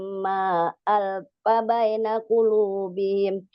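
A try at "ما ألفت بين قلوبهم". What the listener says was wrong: Oh, alfa, alafta bukan alfa.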